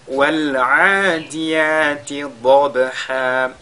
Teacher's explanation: Ici nous avons la lettre Dad qui porte Al-Fatha qui est lue avec At-Tafkhim. Elle est suivie de la lettre Ba qui est Sakina et sur laquelle on fait Al-Qalqala